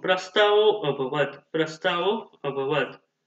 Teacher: Here visarga sandhi rule will be applied when visarga, when visarga sandhi rule will be applied when visarga, when visarga followed by short a, when visarga followed by short a, then visarga converted into o